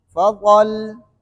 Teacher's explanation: لام میں زبان تھوڑی سی سختی سے ملا لے تاکہ تشدید ادا ہو جائے